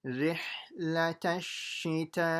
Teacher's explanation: There has to be a big ha from the middle of the throat.